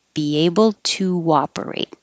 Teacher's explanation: a little invisible w will happen there